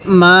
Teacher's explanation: এই মিমের মধ্যে আমরা 3 আলিফ টান দিব, কারণ মদের হরফের উপর যখন দেখব এরকম চিকন চিহ্ন, এরপর এরকম লম্বা হামজা, তখন আমরা ওই হরফটির মধ্যে 3 আলিফ টান দিব।